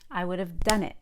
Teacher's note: The I would have is squeezed before the word done.